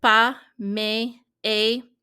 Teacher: You may have noticed that with pas, mais, et, some of these words that have a consonant on the end, you actually will not pronounce that consonant, even though it's written that way